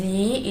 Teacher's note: bacaan mad tabi'i sebab kasra diikuti dengan ya sukun yang panjangnya satu alif atau dua harokat